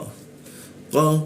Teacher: Nah ini salah satu huruf yang mentok ya, hanya 1 harokat dia, mim ba di, seperti itu. Qa, huruf qa di siku tenggorokan lidahnya kita naikkan sehingga tidak ada hembusan udara ketika membaca qa